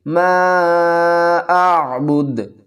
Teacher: دال کے اوپر کلکلہ کریں گے وقف کی صورت میں اور دال کو ساکن پڑھیں گے۔ ما اعبد ولا انا عابد